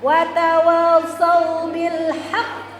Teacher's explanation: Hak itu ada tasdidnya. Tasdidnya ini tidak hilang, kita tahan sebelum dipantulkan. Huruf qaf punya sifat qalqalah